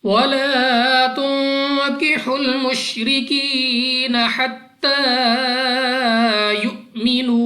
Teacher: हमजा साकिन झटका देकर पढ़ेंगे · अलिफ से पहले जबर अलिफ मद्दा है, 2 सेकंड तक लंबा करेंगे. नून साकिन के बाद काफ हरूफ इख्फा में से है, गुन्ना करके पढ़ा जाएगा. रा के नीचे जेर, रा को बारीक पढ़ेंगे.